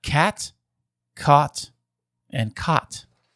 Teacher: So you do not have the low back vowel merger unless you were doing some performative separation there.